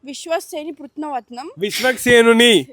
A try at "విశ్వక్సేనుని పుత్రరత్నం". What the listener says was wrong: విశ్వక్సేనుని విశ్వస్ కాదు విశ్వక్ సేనుని